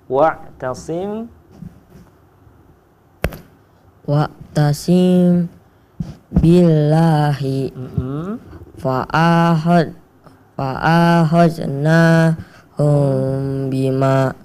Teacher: mim sukunnya dibunyikan dengan sedikit merenggangkan kedua bibir dan didengungkan selama 3 harakat. Baik, alhamdulillah rabbil alamin. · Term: ikhfa syafawi